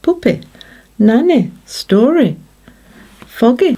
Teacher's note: in some accents the sound is closer to an /i/ sound · Technically, the sound is neither I nor E, but comes somewhere between the two sounds.